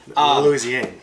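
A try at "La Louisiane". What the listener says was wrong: Louisiana. Yeah, there's no R on the end.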